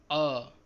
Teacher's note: मध्य स्वर उच्चारण के समय जीभ का बीच का भाग उठता है अ, केंद्रीय स्वर।